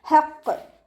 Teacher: ലാമ് കൽക്കല ലെറ്ററിലാത്തത് കൊണ്ട് ഹഫ് സുക്കൂന് കൊടുക്കുക. ഹ മഖ്റജ് വരുന്നത് വസത്തുൽ ഹൽക്കാണ്. തൊണ്ടയുടെ മധ്യഭാഗം സൗണ്ടിനെ വ്യക്തമാക്കി കൊടുക്കുക.